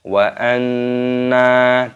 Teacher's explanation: Nun tasdid hukumnya dibaca gunnah. Cara membacanya yaitu didengungkan. Wa anna, dan dipanjangkan nunnya.